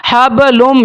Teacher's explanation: نون ساکن کے بعد حروف یمون میں سے میم آ گیا ہے تو یہاں پر ادغام بالغنہ کیا جائے گا